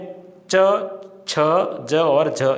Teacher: पहले तो उच्चारण अवयव आपस में स्पर्श करते हैं और बाद में रगड़ या घर्षण होता है। तो रगड़ या घर्षण के कारण संघर्ष करते हुए जब इनकी ध्वनि का उच्चारण होता है तो इन्हें स्पर्श संघर्षी व्यंजन कहते हैं।